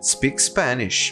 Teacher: primeira palavra termina com um determinado som não importa qual e a segunda palavra começa com o mesmo som da palavra anterior então nós juntamos os dois e eles sobrepõem um ao outro